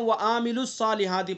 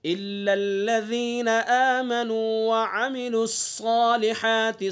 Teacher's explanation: عین کے اوپر خالی حرکت ہے، اور حرکت کو ذرا بھی نہیں کھینچا جاتا ہے۔ جلدی سے پڑھ کر کے آگے چلیں گے۔